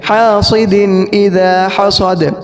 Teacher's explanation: آخری آیت اس کے اندر وَمِن شَرِّ حَاسِدٍ إِذَا حَسَدَ، اب ہا بڑی ہے تو اس کی وجہ سے عامتاً ایسا ہوتا ہے کہ توجہ نہ ہونے کی وجہ سے جو سین ہے وہ صاد ہو جاتا ہے